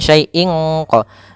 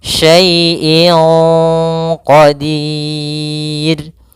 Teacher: Maka menyamarkannya langsung ke huruf qaf, bukan syai'in qa. Jangan pakai eng, tapi dia langsung disamarkan ke huruf qafnya.